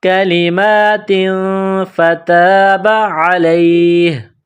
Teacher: دو زیر تنوین ہے، تنوین کے بعد فا ہے، حروف اخفا ہے، تو یہاں آواز ناک میں چھپائیں گے اور اس ناک میں آواز چھپانے کو اخفا کہتے ہیں۔ · الف سے پہلے زبر ہے، حروف مدہ ہے، ایک الف کے برابر کھینچ کر پڑھیں گے۔ فتاب علیہ، عین گلے کے درمیان سے زور لگا کر عین کو نکالیں گے، پڑھیں گے۔